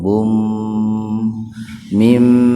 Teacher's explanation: Mim itu kan gunnah, dimasukkan ke mim dengan mendengung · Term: idgham bi gunnah